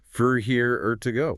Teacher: This is a process called vowel reduction, where the vowels collapse into a lazy neutral sound called a schwa. So the word for loses its hard or and becomes fur.